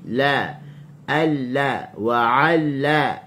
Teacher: وعلم huruf ain. وعلم la, hujung tepi lidah diletakkan di gusi